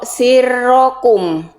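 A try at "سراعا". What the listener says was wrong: Nah, lagi rohnya jangan jadi orang bule.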